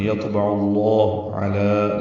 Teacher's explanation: یطبع میں طا ساکن ہے اور یہ پر ہے اور اس پہ قلقلہ ہے · لام کو دو حرکات لمبا کرنا ہے